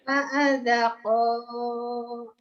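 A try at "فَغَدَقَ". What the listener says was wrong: Pago itu ada titiknya. Ketuker. Fagodaqa.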